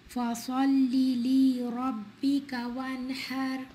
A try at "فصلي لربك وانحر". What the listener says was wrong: فصلي, you stretch the lamb, and we said this is from mistakes. The lamb here is short.